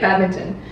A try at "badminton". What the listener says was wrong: No, Ming. Where's the Ming? There's no Ming in there. It's badminton.